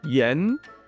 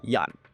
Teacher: in Cantonese we say the R becomes a Y, so we say yan. There's no actual R like that in Cantonese, and so Most Cantonese people can't make that sound.